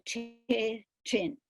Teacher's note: Esa representación la representación del sonido ch sería Wenchu con TR, que usa la TR del español para tres, tren, pero no es el mismo sonido, es ch